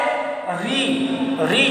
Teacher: री जो है ये आपका मूर्धन्य स्वर है।